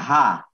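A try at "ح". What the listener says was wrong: এটা আর একটু পাতলা করে হা হা হা বলেন হা জি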